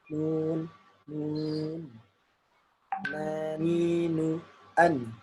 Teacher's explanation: Nah, jadi ada yang masuk hidung. Ini nun kan dia gunnah ya, ada gunnahnya. Jadi nanti hidung bergetar. Karena di sini kan ditutup.